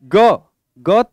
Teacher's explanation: ग ग तृतीय वर्ण होता है मित्रों, और तृतीय वर्ण है तो ये अघोष नहीं है और महाप्राण भी नहीं है, ये अल्पप्राण होता है